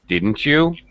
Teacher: my pitch Falls very low · correct falling intonation at the end falling pitch